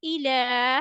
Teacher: We have to stretch it equal to one alif.